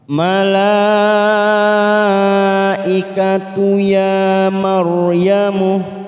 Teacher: ada mat yang bertemu dengan hamzah dalam satu kalimat, namanya bacaan mat wajib mutasil. Kita panjangkan 5 harokat